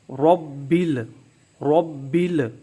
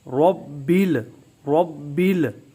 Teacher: ربل، ربل، را کو پر پڑھیں، منہ میں آواز بھر جائے، زبان کی جڑ جو ہے اوپر کی طرف بلند ہو۔ را کو پڑھتے وقت زبان کی جڑ کو اوپر اٹھانا ہے، منہ میں آواز بھرنی ہے تاکہ را پر ادا ہو، موٹی ادا ہو، اور با کی زیر جو ہے اس کو معروف طریقے سے پڑھتے ہوئے آگے ملا دیں گے۔ · را کو پر پڑھیں گے، موٹا پڑھیں گے، با پر تیسرے درجے کا قلقلہ کریں گے، اور با کے نیچے جو زیر ہے، کسرہ ہے، اس کو معروف پڑھیں گے۔